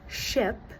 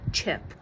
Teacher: a sound that is technically comprised of two sounds like ch which is made up of t plus shh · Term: De-affrication